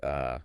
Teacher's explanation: that super short relaxed uh sound. Ah, the schwah.